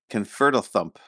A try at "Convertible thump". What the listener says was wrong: No, there's no th. It's an f. Convertible thump.